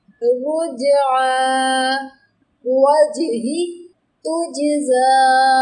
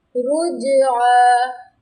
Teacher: جب جیم کی ادائیگی کی ہے تو جیم کو تھوڑا وائبریٹ کر دیا، جیم کو تھوڑا ہلا دیا ہے۔ رجعا، تو یہ جو اس کو ہلایا ہے نا، جیم کی ایک صفت ہے۔